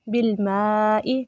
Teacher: مد واجب ہے، 3 سے 4 الف کے برابر لمبا کریں گے